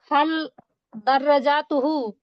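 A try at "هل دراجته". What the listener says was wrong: যার মধ্যে টান দিয়ে দিচ্ছেন জাতুহু না হাল দারাজাতুহু হাল দারাজাতুহু এভাবে বলেন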